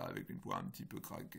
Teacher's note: c'est des sortes de petites occlusions qui se suivent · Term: la voix craquée